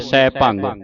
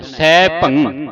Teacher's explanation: ਭਬ ਉੱਤੇ ਟਿੱਪੀ ਲਾ ਕੇ ਇੱਥੇ ਹੀ ਰੋਕ ਦੇਣਾ ਸੈਭੰ ਭੰਗ ਨਹੀਂ ਉਚਾਰਨ ਕਰਨਾ